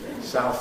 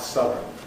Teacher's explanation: We have a switch from ow to uh as we add the suffix